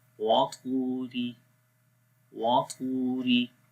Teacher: extra bold in the ta due to musta'liya and mutbaqa